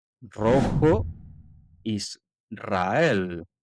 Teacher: Al inicio de palabra o después de l, n o s, suena fuerte.